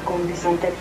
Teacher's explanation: la N velarizada en con